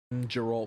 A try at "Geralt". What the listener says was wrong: It's Geralt with a hard G.